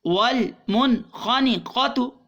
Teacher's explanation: خا کی وجہ سے نون ساکن کے بعد خا آ گئی، حروف حلقیہ میں سے یہاں پر اظہار ہوگا